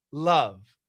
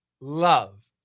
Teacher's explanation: But anyway, we say there's a dark L and a light L. And the dark L is pronounced inside the mouth, and the light L is pronounced beyond the teeth